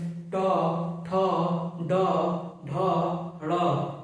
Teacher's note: ट वर्ग के जितने भी वर्ण हैं उनका उच्चारण करेंगे तो जीभ जो जाके मूर्धा पर सटेगी। इसको मूर्धन्य कहेंगे।